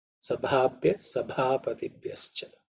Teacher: b is the fourth letter in the pavarga, so that has to be aspirated